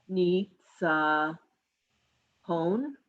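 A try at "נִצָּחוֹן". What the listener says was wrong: Chon. That's a chet.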